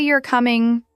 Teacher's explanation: But if I say you're coming, rising tone, it becomes a question